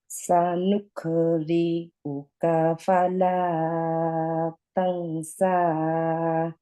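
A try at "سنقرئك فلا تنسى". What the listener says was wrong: সা সানুকো, নুকো, not নুক।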